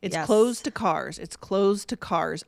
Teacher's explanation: I cannot tell the difference between where the D ends and where the T begins